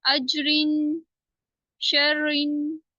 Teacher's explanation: अगर रा के नीचे दो जेर है तो हम इसको पढ़ेंगे बारीक, अजरिन, शर्रिन।